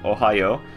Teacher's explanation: The first O is just O, but the end of Ohayo is a long O.